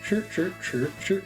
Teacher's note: It's kind of an almost inaudible R sound at the end of it.